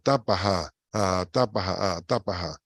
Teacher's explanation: Fíjense bien que tengo dos AES y no una A larga.